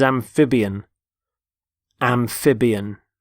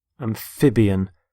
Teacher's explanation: Notice the stress on the middle syllable, amphib. Amphibian.